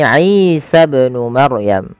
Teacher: Isa panjang inya dipanjangkan dua harakat karena ia mad thabi'i